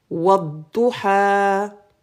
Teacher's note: On fait la liaison. Ce n'est pas wa'adduha.